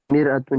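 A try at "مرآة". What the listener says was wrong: مرآتن. اتن نہیں ہے، آتن ہے. مرآتن.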